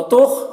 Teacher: खौ को पूर पढ़ेंगे, खौ हुरूफ मुस्तालिया में से है।